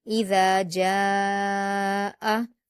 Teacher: जीम पर अलिफ मद्दा है और अलिफ मद्दा के बाद हमजा उसी कलीमे में है तो मद्दे मुत्तसिल होगा और उसे 5 हरकत के बराबर खींचेंगे